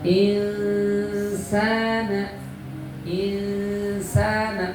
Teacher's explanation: nun ketemu sin ikhfa artinya samar bunyi samar-samar kayak mau ke es itu bunyi ke es itu insana insana mulut kita sudah siap